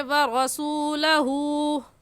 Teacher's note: الٹے پیش کو ایک الف کے برابر کھینچ کر پڑھتے ہیں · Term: الٹا پیش